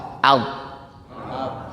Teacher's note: Nah, definisi sukun itu mendekatkan pada posisi makhrajnya. Kalau ba dua bibir maka disukunkan ab.